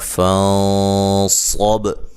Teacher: یہاں نون ساکن کا اخفا مع الغنہ ہے، موٹا اخفا ہے، صاد کو موٹا ادا کرنا ہے اور با پہ قلقلہ کرنا ہے، با کو ہلا کر پڑھنا ہے